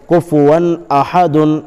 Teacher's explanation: کفوا احد، کاف پیش کو، فا پیش فو، کفو، واو 2 زبر ون، کفون، دیکھو 2 زبر کی تنوین کے بعد حروف حلقی کے 6 حرفوں میں سے حمزہ آیا ہے، اس لیے بغیر غنہ کے جلد ادا کریں گے، اس کو اظہار کہتے ہیں